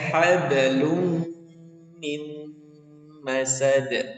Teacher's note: huruf Dal ini Qalqalah ya dia dipantulkan